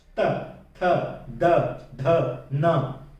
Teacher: दांतों को स्पर्श करती है पीछे से। त थ द ध न।